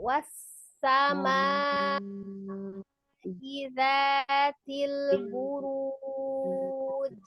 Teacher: Panjang ya. Ma-nya 4 atau 5. Lebih panjang. Jangan 2.